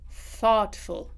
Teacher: I have unvoiced th followed by a t